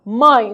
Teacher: Note que a letra E representa uma semivogal, pois tem o som de I e está apoiada em uma vogal poderosa, que é o A, e na mesma sílaba.